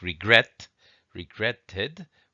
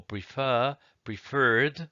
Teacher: the stress is on the last syllable and we just have one single vowel one single consonant at